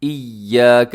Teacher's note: मजबूती के साथ पढ़ना। एक तो मजबूती के साथ पढ़ना है, दूसरा अपने या को थोड़ा सा लंबा भी करना है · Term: तशदीद